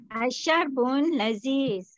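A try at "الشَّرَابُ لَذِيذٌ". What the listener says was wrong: Cantik. Asyarbu laziz. Dia tak bun lah. Bu.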